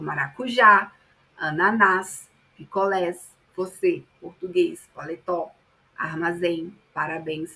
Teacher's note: São palavras em que o acento tônico recai na última sílaba. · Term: oxítonas